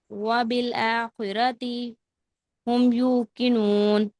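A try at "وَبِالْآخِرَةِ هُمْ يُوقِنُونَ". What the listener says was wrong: दोबारा, वबिल आखिरती, लंबा नहीं करना ता को।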